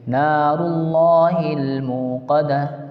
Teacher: نار اللہ لام اللہ سے پہلے پیش ہے، اس لیے اللہ کے لام کو پر پڑھیں گے